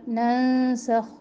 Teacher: यहाँ पे हम इख्फ़ा करेंगे नून साकिन पर, बारीक इख्फ़ा। सख, ख़ा में बहुत ज़्यादा खड़खड़ाहट ना हो।